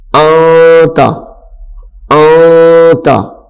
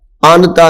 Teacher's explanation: جب پڑھنا ہے آواز کو تھوڑا ناک میں لے جا کے ٹھہرا کے اس کو پڑھ دینا ہے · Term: اخفاء